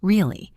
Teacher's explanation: if I say it with a high fall, really, it means I am excited